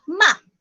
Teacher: Now this time, let's have the fourth tone. The fourth tone is going down, and usually it is forceful.